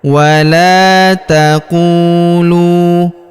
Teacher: huruf lu kita panjangkan dua harakat karena wau sukun di depannya alifnya tidak dibaca atau tidak dianggap.